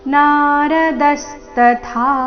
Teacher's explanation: ಕೊನೆಗೆ ಥ ಮಹಾಪ್ರಾಣ ದೀರ್ಘ